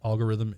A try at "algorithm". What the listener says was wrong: there's an l in that word